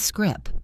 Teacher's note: If you are waiting to hear a release of air at the end of those words, you are going to be waiting a long time